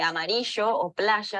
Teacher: esa fricción en la articulación del sonido, ese sh de amarillo o playa tan rioplatense